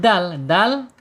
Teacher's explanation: dal ini secara makhraj itu ada di ujung lidah menyentuh pangkal ya.